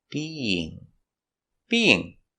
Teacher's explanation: we have two vowels together being we have the Y sound in the middle to connect the vowels